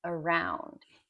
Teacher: the first syllable is an A, and the second syllable, round in this case, is the strong syllable where the stress is. Then that first A, you will hear native speakers always say around.